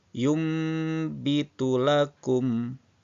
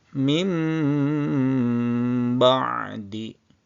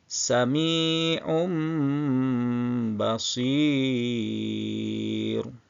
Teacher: bunyi huruf nun sukun atau tanwin dan fathah, kasroh ataupun dhammatain beralih menjadi bunyi mim dengan disertai dengung apabila bertemu dengan huruf iqlab.